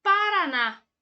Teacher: sílaba tônica de Paraná é o na oxítona sempre que a sílaba tônica for a última será uma oxítona